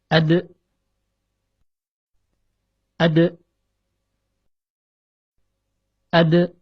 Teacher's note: Ketika kita melafazkan huruf ini dan berhenti pada huruf ta, napas akan terus mengalir keluar mulut. Kedua, tatkala dalam keadaan sukun, huruf dal memiliki sifat qalqalah atau suara yang memantul.